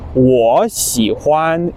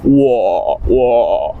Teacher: I think third tone is really just going down, and then it only comes up when you say the next character.